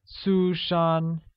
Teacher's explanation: She is Susan translates as 她是苏珊, where 苏珊 is pronounced with two high-level tones, one on U and the other on A.